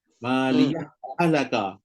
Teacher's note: Ha pertama mati, ha kedua hidup. Maka kalau sambung dia jadi idgham mutamathilain.